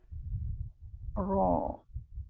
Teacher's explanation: Pangkal lidah terangkat dia.